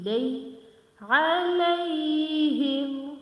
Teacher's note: Okay, this is ya lean. Okay, this is ya lean because it's fatta before ya. So lay we will say it very quickly.